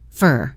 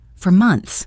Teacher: The word for often sounds like fur. Fur, very unstressed.